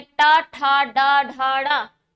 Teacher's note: और ट वर्ग के वर्ण जैसे आप बोलेंगे ट ठ ड ढ ड़, तो आप पाएंगे कि आपकी जीवा पहले मुड़ रही है, फिर ऊपर वाले स्थान को स्पर्श कर रही है, वापस आ रही है, उसके बाद जो ध्वनि उच्चरित हो रही है तब जाकर के जो वर्ड उच्चरित हो रहे हैं हम कहते हैं मूर्धनी।